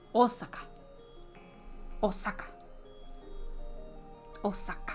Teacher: in like Japanese, they put the same emphasis on every single syllable.